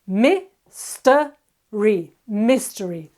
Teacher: 3 syllables, mystery, mystery. The accent is on the first syllable, mystery.